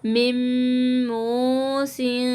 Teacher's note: فَمَن خَافَ، یہاں پہ دیکھیے گا نون ساکن ہے اور میم کے اوپر تشدید ہے، تو ہم نون کو نہیں پڑھیں گے، میم کو میم کے ساتھ گنہ کریں گے ملا کے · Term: ادغام